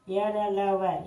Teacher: य, र, ल, व ये अल्प प्राण है, क्योंकि इन्हें बोलने में कम वायु खर्च होता है